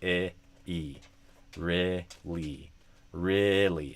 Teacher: So kind of like e fechado, really. And then the second syllable of really has a fleece vowel, a E sound.